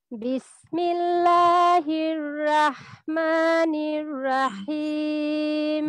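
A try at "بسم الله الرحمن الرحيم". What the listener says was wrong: বিসমিল্লাহ, একটু খেয়াল করেন, বিসমিল্লাহির রাহনা, বিসমিল্লাহির রাহ, রাহ রটা মোটা হবে।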